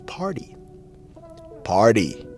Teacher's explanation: it has that flap T sound so the flap t turns into a d · this word has a t in it but the T itself has a D sound